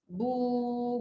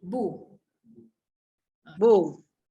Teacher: yang lebih panjang waw mat dia datang daripada rongga mulut.